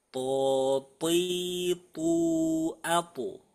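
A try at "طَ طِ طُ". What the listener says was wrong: Ya, sedikit ada udaranya. Coba dikurangi lagi. To, ti, tu, to.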